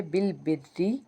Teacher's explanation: रा है वह बेसिकली जेर के साथ है तो इसको हमने बारीक अदा करना है